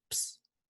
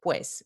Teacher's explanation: Entonces, ps, en lugar de pues. Se pierde por completo el diptongo, ¿no? Las dos vocales.